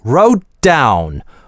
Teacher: Wrote - гортанная смычка, а дальше down. На /d/ начинается.